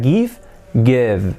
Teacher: La V, una F, pero sonora.